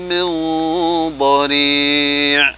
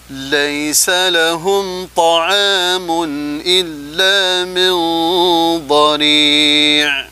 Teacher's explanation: Kemudian ada ikhfa, ya, nun sukun bertemu dengan dha, dibaca tafkhim karena nun sukunnya, ya, menghadapi huruf isti'la, huruf dhad